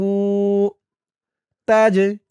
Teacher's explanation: জিম কলকলার হরফ ধাক্কা দিতে হবে।